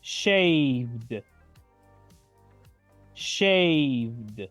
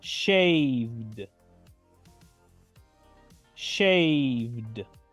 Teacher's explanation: la última e es casi muda y solo pronuncio la letra d del final